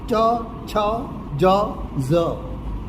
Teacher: પછી તરત જ તાલવ્ય આવે છે વ્યંજનોમાં કંઠથી ઉચ્ચારતા એટલે કંઠ્ય તાળવાને જીવ અડે છે એટલે તાલવ્ય · તાળવાને જીવ અડે છે એટલે તાલવ્ય. ચ, છ, જ, ઝ આ તાલવ્ય બોલાય.